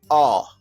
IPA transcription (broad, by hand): ɔː